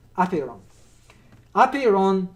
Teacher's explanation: the accent on the first syllable